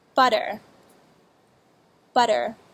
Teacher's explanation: You touch the tip of your tongue lightly and quickly to the roof of your mouth just behind your top front teeth, making something like a light D sound, like this: butter, butter. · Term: alveolar flap